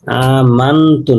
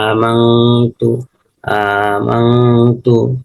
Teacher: আমরা এখানে তা পাইছি, নুনের সাকিন, নুন সাকিনের পরে তা আসছে, এখানে এই তা, নুন সাকিনটাকে গুণ্য করতে হবে এবং ইকফা করতে হবে